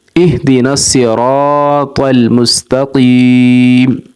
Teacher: را کے آگے الف آ رہا ہے، الف سے پہلے زبر ہے، الف حروف مدہ ہے، حروف مدہ کو 1 سیکنڈ تک لمبا کریں گے تو را الف زبر را، 1 سیکنڈ تک را کو لمبا کریں گے